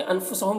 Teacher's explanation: انفسہم کے نون میں اخفا ہو رہا ہے، ہم کے میم میں اظہار شفوی ہو رہا ہے، اسے جلد پڑھنا ہے۔